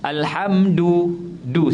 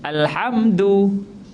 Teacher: Dal menyentuh pangkal gigi, bukan menyentuh lelangit. Selalunya kita baca dal sentuh lelangit. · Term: makhraj yang betul